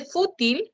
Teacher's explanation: En el caso de fútil, la sílaba tónica es la primera.